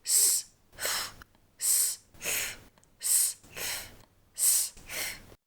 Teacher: So there's a bit more friction for this one. Both s and th are voiceless. So no voice, please, just friction.